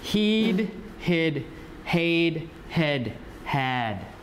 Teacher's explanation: so the tongue will come down from high to low